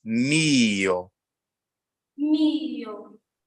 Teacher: when you say mio, the stress is on the first syllable. So it's mio.